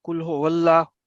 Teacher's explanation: یہ واللہ یہ الف بالکل نہیں پڑھا جائے گا، اس کی وجہ کہ لام کے اوپر نیکسٹ جو پہلا اگلا متحرک لام ہے اس کے اوپر شدہ ہے.